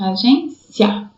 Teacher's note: Tá vendo? O I é mais fraquinho e o A mais forte. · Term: ditongo crescente